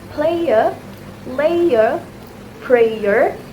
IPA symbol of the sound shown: eɪə